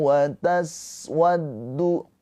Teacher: Sin sukun mempunyai sifat hames. Ya, hames itu ada aliran nafas.